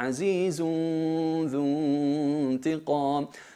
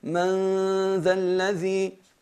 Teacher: Es aclarar el sonido de la nun y aplicarle más gunna, y eso sería incorrecto. El ikhfa, disimular el cuerpo de la nun y mantener simplemente la gunna.